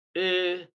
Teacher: stress is placed on the third syllable from the beginning, or the second syllable from the end of the word. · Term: word stress